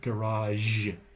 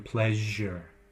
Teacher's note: take that SH sound and voice it